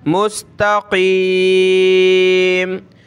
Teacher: قاف کو موٹا کریں، اس کی جگہ آپ نے کاف نہیں پڑھنا، تقیم باریک نہیں پڑھیں گے، بڑا کر کے پڑھیں گے